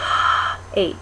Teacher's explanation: that's considered a glottal sound because the glottis is wide open it's just totally wide open and the air is rushing through